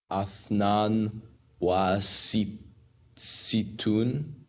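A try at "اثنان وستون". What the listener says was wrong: Except notice that the very first aleph has the hamza underneath the aleph. Ithnan wa sittun. The ithnan part is the 2, and we know the th, noon, and then there's a vowel. In this case, it looks like an aleph.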